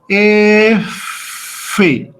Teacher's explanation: Para hacer el sonido pegamos nuestro labio inferior con nuestro diente superior. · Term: labiodental